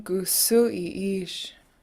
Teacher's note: gusu sounds with this rounded u sound